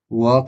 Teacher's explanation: व का उच्चारण स्थान है दंत और ओष्ठ। व का जो उच्चारण स्थान है दंत और ओष्ठ। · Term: दंतोष्ठ